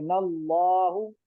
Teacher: हरफ के ऊपर जबर है, मोटा करेंगे। नल्लाहु, सिर्फ लाम खड़ा जबर ला को मोटा पढ़ना है, उसके आगे पीछे किसी और को नहीं, الله नून को वगैरह को नहीं।